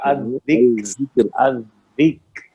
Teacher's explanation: الذکر, الذکر, بالکل باریک, یہ دال بھی باریک, کاف بھی باریک, را بھی باریک